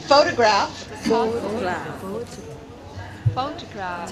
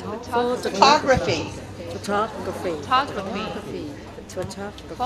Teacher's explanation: Notice that in the stressed syllable, we have the full vowel, eh, o. In the unstressed syllable, we have the unstressed vowel, schwa.